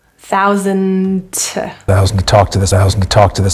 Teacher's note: both of those twos are reduced to a t